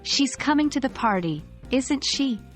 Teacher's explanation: If you say the question tag with a rising intonation, you're genuinely asking a question.